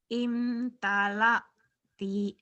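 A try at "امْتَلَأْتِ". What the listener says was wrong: Imtalati. Kurang neken.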